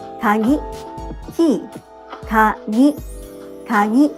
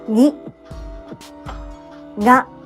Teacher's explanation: Gi in kagi and ga in kagami are nasal sounds.